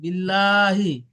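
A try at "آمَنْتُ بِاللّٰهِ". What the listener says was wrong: ভাই টান আছে না, টান দিয়ে বলেন ভাই। ভাই মান তো আবার গুণ হলো না, মন ভাই খেয়াল করে। আমানতু, আমানতু বিল্লাহি, বিল্লাহি বলেন।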